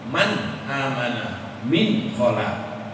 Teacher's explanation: Kalau izhar, nunnya tampak jelas, tetap berbunyi nun.